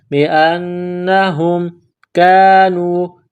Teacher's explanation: نون میں غنہ کرنی ہے، آواز ناک میں چھپانی ہے ۔ بِأَنَّهُمْ كَانُوا، کاف کو باریک کرنا ہے، نون واو پیش · پڑھنا ہے، ذالک بانہم، حمزہ کو نون کے ساتھ ملانا ہے، نون میں غنہ کرنی ہے، آواز ناک میں چھپانی ہے۔